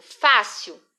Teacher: não é a última sílaba que é mais forte, é a penúltima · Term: paroxítona